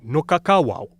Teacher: with a voiced w in the middle and a voiceless w at the end